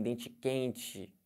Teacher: O carioca já vem dente quente, né? Com esse chiado típico.